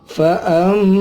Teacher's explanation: ini ada mim tasydid, dibaca gunnah, ditahan, mim matinya 3 atau lebih harokat. Fa'amma, ya, dibaca gunnah, udara keluar lewat hidung.